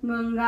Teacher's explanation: तर हे सगळं त्यांना शिकवावं लागतं आणि त्या प्रत्येक 5 वर्गांना आपापला एक नेझल दिलेला आहे आणि त्या नेझलशी संबंधितच त्यांचं उच्चारण असतं. म्हणून गंगा या शब्दातला जो अनुस्वार जो आहे, आपण लिहितो अनुस्वार सगळ्यांना, पण तो गंगा म्हणजे तो ङ असतो